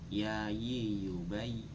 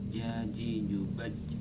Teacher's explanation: jim, shin, ya itu keluar tepat di tengah lidah, terus kemudian menempati langit-langit mulut yang atas.